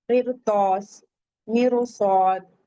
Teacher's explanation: را ساکن سے پہلے زیر ہے لیکن حروف مستعلیہ آ رہے ہیں تو بھی ہم ہیوی پڑھیں گے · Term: مفخم